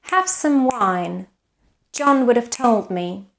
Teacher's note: because what marks the rhythm is the number of syllables so in English these two sentences have the same duration